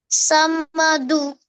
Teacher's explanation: du is alpa prana, kha is mahaprana. Samadukha, समदुःख not dhu.